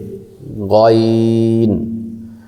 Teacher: গাইন হারফটি কণ্ঠনালী শেষ হইতে